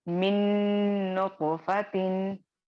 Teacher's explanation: तो यहाँ पे क्या होगा, जो नूने साकिन है वो पूरी तरह से नूने मुशद्दद में मुद्गम हो जाएगा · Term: इदगाम